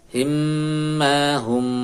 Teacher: mim ketemu mim ini tasdidnya didengungkan